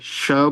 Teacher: उष्म वर्णों श और ह का अभ्यंतर प्रयत्न इशद विवृत है। तो इसमें मुंह थोड़ा खुलता है।